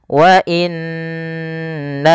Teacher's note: Jaiz itu boleh mad panjang, maka di sini na-nya dipanjangkan sepanjang 4 harokat atau 5 harokat. Wa inna, setelah pertama menahan nunnya, kemudian na-nya dipanjangkan lagi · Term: mad jaiz munfasil